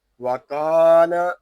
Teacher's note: آگے را پر ہے اور وقف میں یہاں ہوگا وقف مجوز. وکان یہاں کاف کو ایک الف تک کھینچ کے پڑھیں گے کیونکہ یہاں الف مدہ ہو رہا ہے